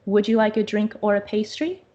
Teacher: However, here, when I was asking, would you like a drink or a pastry? The tone of my voice rises.